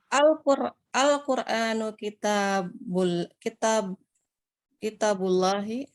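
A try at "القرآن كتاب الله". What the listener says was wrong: Tapi nadanya kurang ya. Coba Qur'annya nadanya enggak pertanyaan ini.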